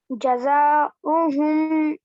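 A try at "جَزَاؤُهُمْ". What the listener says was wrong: जज़ाउहुम, थोड़ा लंबा कीजिए।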